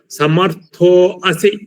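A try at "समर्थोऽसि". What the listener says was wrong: Sir, actually this I is lopa sir, you don't have to say it.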